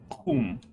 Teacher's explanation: your tongue goes way back to your uvula, and you gotta have a lot of friction when you do it. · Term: capital Q